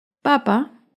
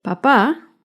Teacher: papá lleva el acento en la primera sílaba en cambio papá lleva el acento en la segunda sílaba